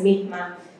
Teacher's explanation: he aspirates his S as mihma